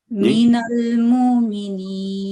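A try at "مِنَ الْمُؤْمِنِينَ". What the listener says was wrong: نہیں مؤمنین، بریک سے لگے، مؤمنین، مومنین نہیں، نرمی نہیں، مؤمنین.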